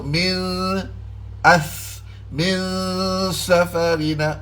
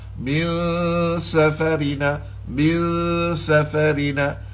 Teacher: lidah kita ini dia akan menghala ke makhraj huruf sin, tapi tak masuk di situ. Dia duduk sekadar disembunyikan di sebalik makhraj huruf sin. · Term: Ikhfa